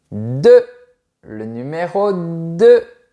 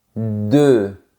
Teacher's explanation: Tes lèvres sont bien arrondies et elles vont un peu vers l'avant. Et ta langue va aussi vers l'avant.